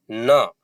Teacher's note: ये सघोष है, अल्प प्राण है, नासिक के है। न, नाक से भी हवा निकल रही है।